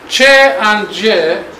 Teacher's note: while producing these two sounds there is mixing between stop and friction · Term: stop consonant with special kind